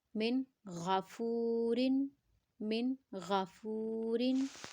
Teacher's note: فا کو ہم نے لمبا کیا کیونکہ ہمارے پاس یہاں واو مدہ ہے